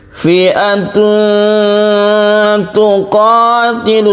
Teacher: Fi'atun tuqatilu, seperti bukan samar, tapi aslinya itu samar. Karena ketika kita membaca tanwin, kita bersiap membaca ta dan didengungkan